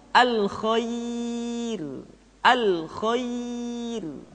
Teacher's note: ro dibaca dengan tipis ketika didahului oleh huruf ya yang sukun